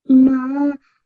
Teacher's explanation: the noon sound will be prolonged for 2 seconds. So it should be na 2 seconds long, okay?